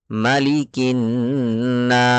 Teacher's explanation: نون اور میم پر تشدید ہوگا تو غنہ ہوگا